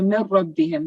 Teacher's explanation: you're not meant to have the noon sound, no ghanna sound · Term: idgham without the nasal sound